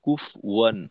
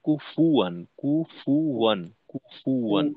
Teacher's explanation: এখানে অনেক সময় দেখা যায় আমাদের কুফ ওয়ান, অর্থাৎ ফায়ে জবরের উচ্চারণ না হয়ে আংশিক জজমের উচ্চারণ হয়, কুফ ওয়ান না কুফু ওয়ান, কুফু ওয়ান, কুফু ওয়ান এরকম।